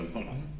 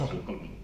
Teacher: les recomiendo que a la hora de pronunciar esa palabra pongan un acento en la última A